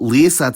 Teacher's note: lísac has a long rising vowel in its stressed syllable